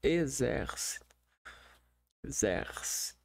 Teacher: Começando com vogal aberta, né? Começa com vogal aberta.